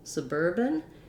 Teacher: Then suburban is basically like putting urban and suburb together a little bit, isn't it? And we have second syllable stress.